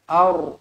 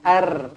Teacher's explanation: ra dibaca tebal kerana sebelumnya berbaris atas. Aur, bukan ar.